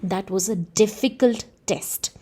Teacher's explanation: I am giving more emphasis to the word difficult than test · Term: emphatic stress